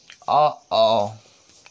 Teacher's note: कहाँ से होगा, तो कंठ से होगा। देखिए अगर बोलेंगे आ तो कहाँ से, तो हम कंठ से बोल रहे हैं।